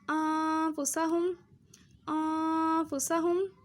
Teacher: نون کی آواز تو آ رہی ہے، ٹھیک ہے، لیکن نون کی آواز چھپی ہوئی ہے، ہلکی سی آواز آ رہی ہے نون کی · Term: اخفا